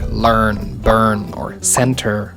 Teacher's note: you combine the r sound with a vowel to create a semi vowel